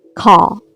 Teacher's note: Australian English is non-rhotic. It means the R sound will never occur at the end of words. For example, an American will say 3 separate sounds for the word car, but an Australian native speaker will only say 2.